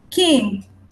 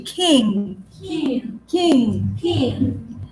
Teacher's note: You don't pronounce the G.